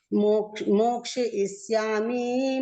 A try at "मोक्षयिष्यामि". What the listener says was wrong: श्लोक तो आपका बिल्कुल सही है, लेकिन मोक्षयिष्यामि माँ में जो इकार की मात्रा ह्रस्व मतलब छोटी है, दीर्घ नहीं है, बड़ी ई की मात्रा नहीं है।